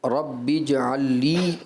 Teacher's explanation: ایسا لگا لام اور نون کا آپ نے ادغام کر دیا